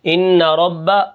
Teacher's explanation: پر ہم کیا کرتے ہیں غنہ کرتے ہیں۔ تو ان ربہم، را کو میں کیا کروں گا موٹا کر کے پڑھوں گا اور با کے اوپر کیا ہے تشدید ہے، ان رب، آگے